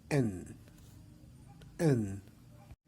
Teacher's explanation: it is a voiced consonant sound the place of articulation is alveolar the manner of articulation is stopped and the position of the